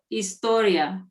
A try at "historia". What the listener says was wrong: Right, because he said you pronounced the H.